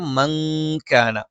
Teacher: നൂനിനെ നമ്മൾ അവ്യക്തമാക്കി മണിച്ചുച്ചരിക്കണം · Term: ഇഖ്ഫ